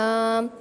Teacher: तरफे लिसान जब जवाही से लेकर तनाया तक के मुकाबिल मसूड़ों से लगे तब जाकर लाम अदा होता है